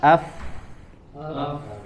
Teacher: dia ciri khas dari huruf fa ini dia mengalirkan nafas, mengalirkan suara